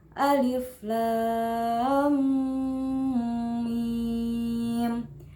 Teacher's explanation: Ada hukum bacaan mad lazim harfi musaqal yaitu lam dalam alif lam mim, dibaca panjang 3 alif atau 6 harokat.